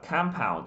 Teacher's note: se a sílaba mais forte eu torno a primeira, compound, isso aqui vira composto, já vira substantivo